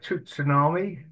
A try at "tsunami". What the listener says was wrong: You know, but yeah, you don't pronounce the T.